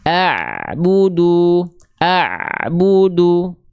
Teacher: huruf Ain enggak punya sifat syiddah tapi sedikit mengalir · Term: Ain sukun